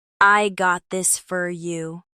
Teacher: The word for often becomes fur when reduced.